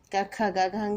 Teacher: गले से हमारी आवाज़ निकल रही है, वायु का स्पर्श गले पे हो रहा है क, ख, ग, घ, अंगा में, और इसीलिए इन का वर्ग की ध्वनियों को कंठव्य ध्वनियाँ कहते हैं।